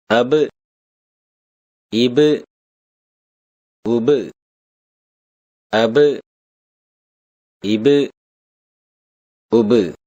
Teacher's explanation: இரு உதடுகளின் ஈரப்பகுதியிலிருந்து ஒலிக்கப்பெறுகின்றது